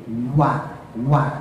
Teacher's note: Kalau wa itu makhrajnya dua bibir. Jadi dua-duanya ditempel bukan gigi. Bukan. Bukan gigi ya.